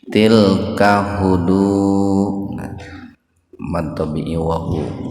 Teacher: waw sukun didahului doma atau doma bertemu waw sukun, dibaca panjang dua ketukan